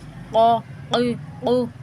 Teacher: قاف زبر قا، قاف زیر قی، قاف پیش قو، قا قی قو۔ اس کو موٹا پڑھنا ہے، اس کو پڑھتے وقت گلے میں تالو کا ہلتا ہوا محسوس ہوتا ہے، وہ ہونا چاہیے، ٹھیک ہے؟ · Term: موٹا قاف